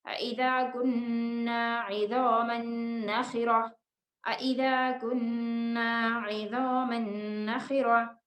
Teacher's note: جب ہم یہاں پر سٹاپ کریں گے تو یہ گول تا کا ساؤنڈ ہا میں چینج ہو جائے گا